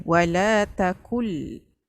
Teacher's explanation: Nun mati jumpa lam dia masuk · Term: idgham bila guna